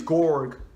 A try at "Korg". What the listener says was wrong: Spelled with a K. K-O-R-G.